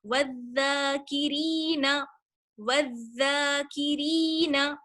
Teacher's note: واو زال زبر والزال کھڑا زبر زا، والذا، والذا، کاف زیر کی، والذاکی، را یا زیر ری، والذاکری، نون زبر نا، والذاکرین. الف اور لام جو زال سے پہلے آیا ہے ہم نے اسے نہیں پڑھا کیونکہ زال جو ہے وہ حروف شمسی میں سے ہے